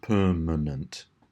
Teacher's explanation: it's the last two syllables, manent, which have that schwa sound. The of per is a little bit like a schwa, but not quite.